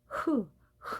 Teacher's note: h는 가장 목구멍에서 나오는 소리여서 후 후 소리가 되겠습니다